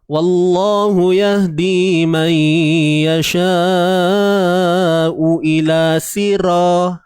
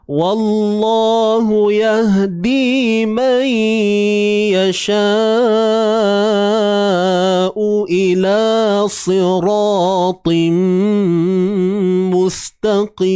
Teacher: Saya lemahkan sifat dia. Saya buang tebal pada sa, saya buang tebal pada ra, saya buang tebal pada ta.